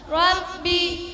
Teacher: harakat dan dibaca tipis karena sebelumnya didahului huruf berharakat kasrah Rabi ro dibaca dengan getaran yang halus tidak sampai terlalu polos